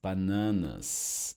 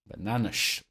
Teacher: s will produce sh when at the end of words as final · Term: sh sound